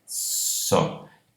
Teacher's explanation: o S é produzido com uma protrusão labial. Essa protrusão alonga o tubo à frente da constrição alveolar do S, e alongando esse tubo, comprimento então, portanto, maior, produz frequências mais baixas de formantes.